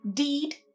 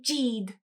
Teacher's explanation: For d and e, instead of saying deed, for example, many Japanese speakers might say jeed.